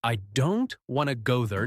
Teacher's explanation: Now the smaller words like I to and there are said more softly or quickly. This rhythm gives English a natural music. · The important words in this sentence are stressed, are said strongly. Don't, go, now. The smaller words like I, to, and there are said more softly or quickly.